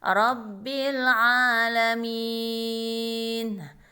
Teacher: Alif dan lam mati dibaca jelas, ya, karena dia bertemu dengan huruf izhar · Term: alif lam qamariyah